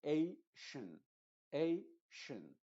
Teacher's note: Y aquí no te confundas, la tion es una sola sílaba y A es la penúltima sílaba. Entonces A va a tener la fuerza de la voz y tion no lo va a tener. De hecho, va a sonar como Asian.